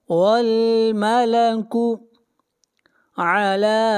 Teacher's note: لا کے اوپر مد منفصل ہے، اس مد کو 3 الف کے برابر کھینچ کر پڑھیں گے، اور را کو موٹا پڑھیں گے، را سے پہلے زبر ہے.